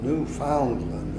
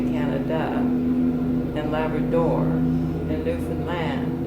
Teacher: in Canada, all the accent is on the last syllable.